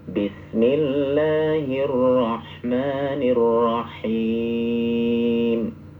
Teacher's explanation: Jangan dipotong di rah ya, membacanya nyambung.